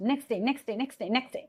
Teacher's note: Like if I say here next day, in simple we say next day, but when you're saying in fast, next day, next day, next day, next day, so here the glide of sound, like it becomes next day. So this t sound is glided, it is omitted, it was ignored. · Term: elision